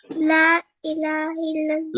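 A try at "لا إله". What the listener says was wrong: লাতে কি করতে হবে? আর একটু বেশি করে টানতে হবে, লা ইলাহা।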